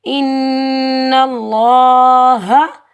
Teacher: اللہ کے لام سے پہلے نون کے اوپر زبر ہے، تو اللہ والے لام کو ہم موٹا پڑھیں گے، اگر زیر ہوتا تو ہم باریک پڑھتے۔